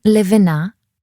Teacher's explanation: this was an L formed using only the front of your tongue